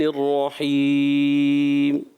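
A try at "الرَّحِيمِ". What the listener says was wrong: رحیم ناک کی طرف نہ جائے، جب آپ مد عارض کر رہے ہیں تو بہت زیادہ ناک کی طرف نہ جائے۔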